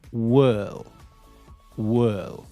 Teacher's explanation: when you make this L sound, your tongue goes up to the back of your top front teeth